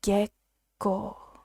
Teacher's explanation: the double letters when we transcribe it into Romaji is a tiny small pause before the second syllable